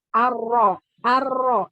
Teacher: ini ujung lidah bergetar ya. Ujung lidah bergetar itu hanya dimiliki oleh ro. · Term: At-takrir